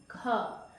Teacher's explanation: जब आप ख बोल रहे हो तो साउंड कहां से है? आपके गले से है। बुक का कोई पार्ट टच नहीं हो रहा। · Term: कंठ